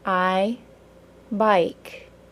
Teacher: the long i is also a two sound vowel that ends in a brief Y sound